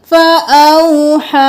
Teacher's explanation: ہا اس کو 4 الف کے برابر کھینچیں گے ، یا کو نہیں پڑھیں گے، فَأَوْحَا۔ یہاں پر دیکھ لیجیے،